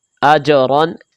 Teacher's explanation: یہ جیم حروف قلقلہ ہے، ان کو آواز لوٹا کر پڑھیں گے۔ حمزہ زبر جیم اج، را 2 زبر رن، اج رن۔